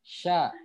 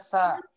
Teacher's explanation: Ingat ya, tengah lidah naikin ke langit-langit. Tengah lidah yang naiknya.